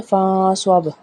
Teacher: کیونکہ نون ساکن کے بعد صاد ہے اور صاد ہے ان 15 حروف میں سے جہاں پہ اخفا ہوگا، ٹھیک ہے۔ فاں صوب، یہاں پہ ہم نے نون کی آواز کو چھپانا ہے۔